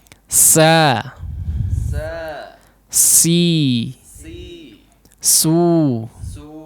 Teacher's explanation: Nah, huruf sin sama ya, hanya PR-nya tadi ditipiskan saja, atau mudahnya huruf sin adalah merupakan versi tipis daripada huruf shad ya